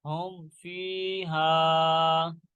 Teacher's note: ہا میم پیش ہم، فا یا زیر فی، ہم فی، ہا الف زبر ہا، ہم فی ہا۔ یہاں پہ اظہار شفیع کا قاعدہ لگ رہا ہے، کیونکہ با اور میم کے علاوہ فا آ رہا ہے، اس لیے یہاں پہ غنہ نہیں کریں گے